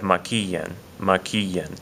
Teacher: It's over that I. It's on the third syllable back from the end of this word maquillan.